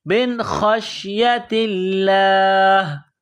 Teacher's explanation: نون ساکن کے بعد خا ہے، حروف حلقی ہے، تو یہاں نون ساکن پر غنہ نہیں کریں گے ، من خشیت اللہ خا کو شین کے ساتھ پلس کرنا